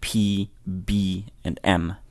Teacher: you have the labial sounds, which are made using both lips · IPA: p b m